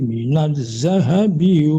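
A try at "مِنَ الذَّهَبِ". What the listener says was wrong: dalya ya pak ya dalalnya dilembutkan jangan za tapi dza lembut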